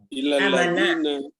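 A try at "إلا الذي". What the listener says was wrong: Jangan illallazina. Illallazi saja. Illallazi.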